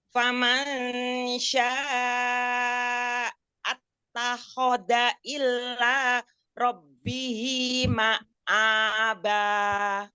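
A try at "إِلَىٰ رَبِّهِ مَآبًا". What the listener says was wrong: Kenapa ilahnya pakai tasjid? Nggak boleh. Kalau ilah pakai tasjid itu berarti kecuali. Tapi kalau ilah, nah itu kepada menuju kepada Allah. Ilah, nggak boleh. Ilah, nggak boleh.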